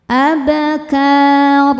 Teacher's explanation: huruf ro dibaca secara tafkhim karena harokatnya di atas yaitu fathah tanwin. Cara bacanya ditebalkan.